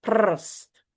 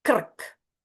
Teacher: Because r is the vowel. It hums. You hold it.